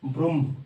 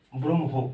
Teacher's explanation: উচ্চারণটা কেন অন্যরকম দেখো, যখন আমরা ব্রহ্ম লিখি তখন কিরকম ভাবে লিখি, বয়রফলা, ঠিক আছে, ঠিক আছে, তো এটার উচ্চারণ কিরকম হয়ে যায়, ব্রহ্ম, আগে মটা চলে আসে তারপরে হ